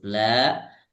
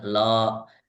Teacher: huruf-huruf yang tipis masih terdengar tebal seperti huruf la masih agak terdengar lo kemudian wa masih agak terdengar wo